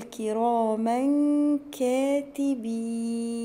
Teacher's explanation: في تنوين ورا حرف الكاف، هنا هيبقى في اخفاء